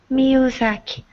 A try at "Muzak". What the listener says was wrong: That's right.